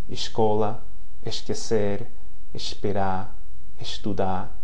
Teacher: If the S at the end of a word or a syllable, okay, comes before a voiceless consonant, those are C, F, P, Q, S, and T, it's going to have an S sound. Okay, so S in syllable final or word final position before a voiceless consonant is S, or SH, sh, in Rio de Janeiro